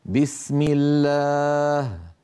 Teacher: اما ان سبق اسم الجلاله بكثره فتبقى اللام على اصلها من الترقيق